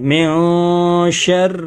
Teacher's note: را کے نیچے زیر ہے اس لیے را باریک پڑھیں گے